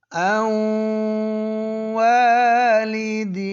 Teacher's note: زبان کی نوک اوپر تالو پر نہیں لگا رہے لیکن ناک میں آواز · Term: غنہ